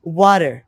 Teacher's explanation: They just change the ta sound into the da sound.